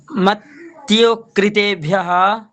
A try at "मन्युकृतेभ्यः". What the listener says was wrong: मत्यु नहीं, मन्युकृतेभ्यः,